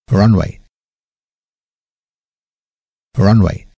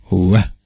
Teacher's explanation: Die Vorderzähne berühren nicht die Unterlippe. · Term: das englische W